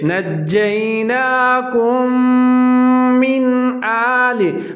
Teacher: یہاں پر ادغام کریں گے، آواز کو 3 سے 4 سیکنڈ تک ناک میں لے جائیں گے